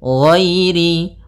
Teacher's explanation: Ghairil, tapi tidak terlalu tebal sampai kepada huruf shad dan huruf dhad, karena huruf dhad yang paling tebal.